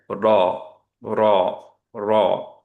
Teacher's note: আমরা বাংলায় যেখানে র উচ্চারণ করি সেটা পিছে একটু উপরের দিকে আমাদের আরেকটু সামনে নিয়ে আসতে হবে, দাঁতের কাছাকাছি নিতে হবে। বাংলাদেশে যে রটা আমরা বলি সেইটাকে যদি আমি হেভি করি তাহলে সাউন্ড শোনাবে এরকম, র, র, র, যেটা খুব ক্লিয়ার না।